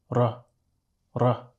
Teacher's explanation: it's a rolled R, right? You're rolling the tip of your tongue at the front top portion of your pallet.